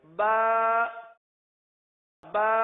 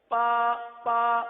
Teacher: बा की बजती हुई आवाज और यह सिर्फ तर हिस्से से ही अदा हो सकती है खुश्क हिस्से से अदा नहीं हो सकती अब मखर की अहमियत · با کی بجتی ہوئی آواز، اور یہ صرف تر حصے سے ہی ادا ہو سکتی ہے، خشک حصے سے ادا نہیں ہو سکتی۔ · با ہونٹوں کے، دونوں ہونٹوں کے تر حصے سے ادا ہوتا ہے۔